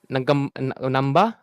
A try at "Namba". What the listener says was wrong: No, no, no. It's not Namba. It's Namba. There is a G. That's a sound.